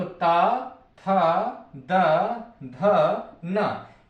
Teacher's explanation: त, थ, द, ध, न, इन वर्णों का उच्चारण करते समय हमारी जीवा दांत से जाकर टकराएगी।